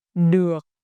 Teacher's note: In the Northern dialect, it has the dấu nặng, heavy tone, so your voice needs to be short and low.